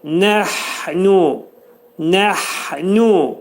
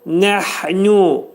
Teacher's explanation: hə hərfi boğazın ortasından çıxarılır və bunun üstündə ani tormuzlama veririk.